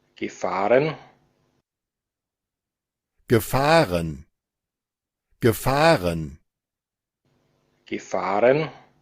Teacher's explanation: Entonces, como participio, nos dice que no va a estar la sílaba tónica en la primera, sino que va a estar en la segunda